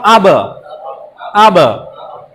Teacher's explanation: আমরা ঠোঁটের থেকে প্রতিধ্বনি করব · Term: কলকলা